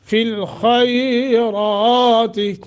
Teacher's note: خیرات کو نرمی کے ساتھ ادا کرنا ہے چونکہ حروف لین ہے۔ یا ساکن ما قبل فتح، فی الخیرات، را موٹا، کھڑی زبر ہے، ایک الف کے برابر لمبا کریں گے۔